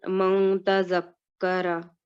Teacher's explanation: we will conceal the sound of noon changing it into a light nasal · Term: rule of ikhfa